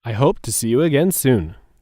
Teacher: The words to see and you are said quickly together. There's also a stress on the word soon.